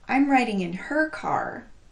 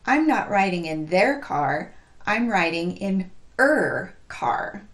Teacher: the word her is emphasized because I'm clarifying whose car I'm writing in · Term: stressed pronoun